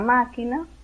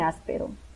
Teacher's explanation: cae en la antepenúltima o sea la tercera de derecha a izquierda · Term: palabra esdrújula